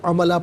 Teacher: لام پر دو زبر کی تنوین ہے، وقف میں الف سے چینج ہو جائے گی تو عملہ پڑھا جائے گا